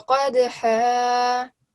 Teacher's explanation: whenever we say this ha, we say it from our throat